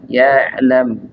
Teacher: dia makhrajnya ditenggorokan bagian tengah ya yaitu Tengah Bagian tenggorokan ya ketika sukun dia punya sifat yaitu bainiah atau tawasut mengalir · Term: huruf Ain